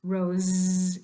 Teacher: put your fingers on your throat and hold out that last sound rose you'll notice that it's the voiced version